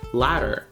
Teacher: in English, we take the D in ladder and turn it into a flap, making the word pronounced ladder.